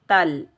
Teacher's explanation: جزم کا کام ہے ملانا۔ تا کو لام ساکن کے ساتھ ملائیں گے، بغیر کھینچے پڑھیں گے